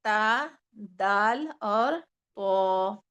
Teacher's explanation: رأس لسان اور ثناء علیا کی جڑ سے 3 حروف ادا ہوتے ہیں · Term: حروف نطعیہ